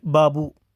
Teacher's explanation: बा अल्पप्राण घोष है